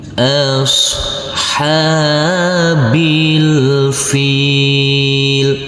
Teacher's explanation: huruf Shad tidak boleh kita pantulkan karena ini bukan bacaan Qalqalah